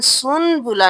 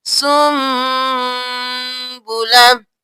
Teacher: اب یہاں پہ ہم سن بولا نہیں کریں گے, سین کو نون کو چھوڑ کر میم کے ساتھ ملائیں گے. سین پیش میم سم با پیش بو سم بو لام زبر لا سم بولا.